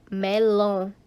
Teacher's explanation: a sílaba tônica é a última então é uma palavra aguda que em português seriam as oxítonas